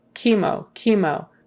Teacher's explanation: that CH is not a CH sound even though you would think it would normally be a CH sound it's not it is a kka sound